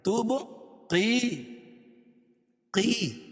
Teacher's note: یا ساکن سے پہلے قاف کے نیچے زیر ہے تو یا مدہ، اس کو ایک الف کے برابر کھینچ کے پڑھیں گے